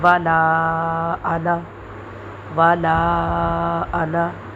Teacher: جہاں بھی انا لفظ آئے گا اس کو نون الف نا ایسے لمبا کر کے نہیں پڑھیں گے، جہاں بھی آئے گا اس کو جلدی میں پڑھیں گے.